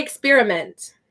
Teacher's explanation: when you're speaking normal English sentences you're gonna say experiment and it's gonna have the UH in it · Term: schwa